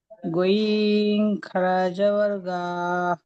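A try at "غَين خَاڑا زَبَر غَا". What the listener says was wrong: গা নয়, গ। বলেন, গইন খাড়া জাবার গ, বলেন বলেন।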